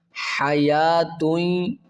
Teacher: یا کھڑا مد زبر یا کو تین الف کی مقدار کھینچیں گے